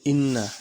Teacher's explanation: নুনের উপরে তাসদিদ রয়েছে এটা হচ্ছে ওয়াজিব গুন্না ওয়াজিব গুন্না আর এই যে মিম সাকিনের বামে যদি বা থাকে